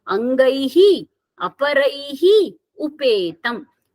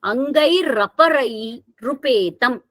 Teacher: Sandhi is that where we closely pronounce the sounds and the sound transforms itself. So visarga, which is pronounced when the two words are separately pronounced, here when we are closely denoting it, it becomes ra